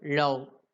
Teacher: நாக்கோடைய டிப்பு எங்க போய் touch ஆகுது? அந்த டீத் ரிட்ஜ் மேல் அன்னத்துல போய் டச் ஆகும்.